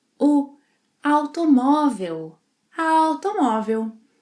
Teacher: the final L sound, which in Brazilian Portuguese is often pronounced as U.